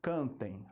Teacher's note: Por que que é um ditongo nasal primeiramente porque o som passa também pelo nariz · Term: ditongo nasal decrescente